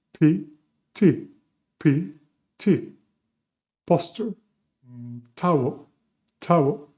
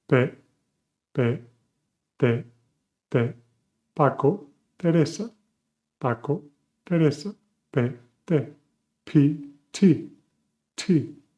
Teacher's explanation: Now, let's stop a bit with P and T, because Very common mistake is for English speakers to let go a lot of air when they say pe and te, because in English is pt with air coming through. In Spanish, no air is coming through.